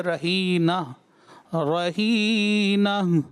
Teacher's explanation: تائے مدورہ کو ہائے مدورہ یعنی چھوٹی ہا سے بدلا، تو اس کی آواز صحیح سے محسوس نہیں ہوئی